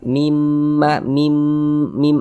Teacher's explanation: mimnya kita tahan kita panjangkan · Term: mim bertasydid